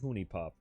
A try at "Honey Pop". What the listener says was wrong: is pronouncing it Hooney Pop instead of Honey Pop.